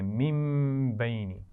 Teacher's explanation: نون ساکن کے بعد با آ جائے تو کیا کرتے ہیں؟ غنہ اور اس کو میم سے بھی بدلتے ہیں اس کی آواز کو. پھر نون نہیں پڑھا جاتا بلکہ میم پڑھتے ہیں.